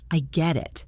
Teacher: Say it with a falling intonation to show empathy.